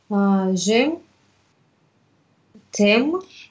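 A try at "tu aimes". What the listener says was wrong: А, тю не сливается, тюэм. Сливается только буковка Э.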